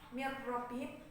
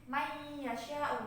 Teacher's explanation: Kalau mir rabbihim itu kan gunahnya sudah hilang. Kalau may yasha itu kan gunahnya masih ada.